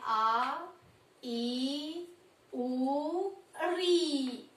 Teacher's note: दीर्घ का अर्थ होता है लंबा, बड़ा, ठीक है। तो यानी कि जिनको बोलने में 2 मात्रा का समय लगता है, जिनको बोलने में ह्रस्व स्वर से दुगना समय लगता है। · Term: दीर्घ स्वर